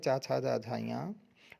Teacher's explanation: चा वर्ग का उच्चारण स्थान तालु है।